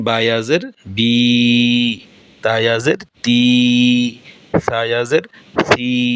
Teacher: এই সি বলে যে টানটা আমরা দিচ্ছি, বা বলে যে টানটা আমরা দিচ্ছি, এই টানটা মদ। আর এই মদের উচ্চারণটা হয় খালি জায়গা, মুখের খালি জায়গা থেকে মদের উচ্চারণ হয়।